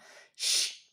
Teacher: Min sya ya, 3 ketukan, tahan dulu. Min sya, huruf sya ini sifatnya adalah tafashi, menyebarnya angin di seluruh rongga mulut. Ya, anginnya jangan keru, sebar semua.